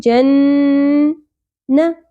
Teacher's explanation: نون مشدد غنہ ہوگا، نون کی آواز کو روکیں گے